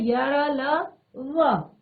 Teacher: अंतस्थ व्यंजन जिसमें जीवा पूरी तरह से मुख के किसी भी भाग को स्पर्श नहीं करती है